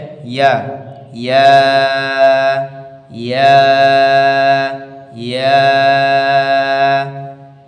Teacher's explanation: গলাও মানে কণ্ঠনালীও ইস্তেমাল হচ্ছে না, আবার ঠোঁটও লাগছে না, মুখের ফাঁকা অংশ থেকে ব্যবহার করা হচ্ছে